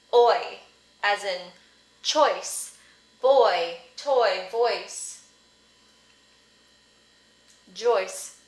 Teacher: So the first half is the vowel sound thought, aw. It's that one that looks like a backward C.